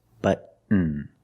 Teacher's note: Stop T and fall to the N.